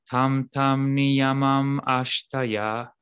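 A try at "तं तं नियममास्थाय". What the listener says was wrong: Really pull out those long A's there. And it kind of hits the melody there.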